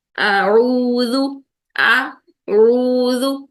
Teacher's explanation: تو ابھی ہم نے پڑھا کہ حمزہ کو ہم نے اقصی حلق میں رکھنا ہے، عین کو ہم نے وسط حلق میں رکھنا ہے